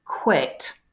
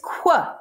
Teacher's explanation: worry about today now this que sound here is a labiovela something produced in the back of the mouth with the tongue up against the soft palate that's the velar part with rounding of the lips that's the labia part and the treatment of these labiovelas in